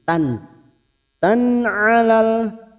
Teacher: fathah tanwin bertemu ain idhar halqi dibaca jelas tanpa mendengung